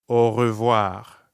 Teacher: notice how when french speakers say au revoir quickly it can sound like one word